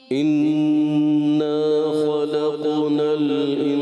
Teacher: تھوڑا سا جو ہے نون مشدد کا شروع کا غنہ کمزور رہا